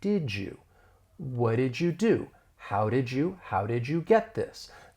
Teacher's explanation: Basically, this is when two sounds, they blend together to create a new sound. So that final D and did, in the beginning Y in you, when they blend together, you really get this j sound. So it's going to sound like did you? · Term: assimilation